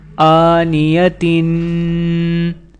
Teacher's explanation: حمزہ کھڑا زبر آ، نون زیر نی، آنی، یا زبر یا، آنیا، تا دو زیر تین، آنیتن۔ تا کے نیچے 2 زیر ہیں اور تنوین کے قواعد کے ساتھ یہاں پر غنہ کیا جائے گا